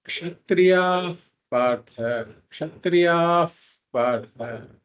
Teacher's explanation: the visarga becomes a f sound before a pakara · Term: upatmaniyaha